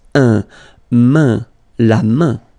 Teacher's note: it will give you the sound un, so it's really a nasal, it goes in your nose